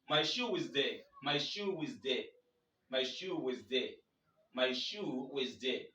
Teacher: you link the two together with a wa, which is called inclusive wa. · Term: intrusive wa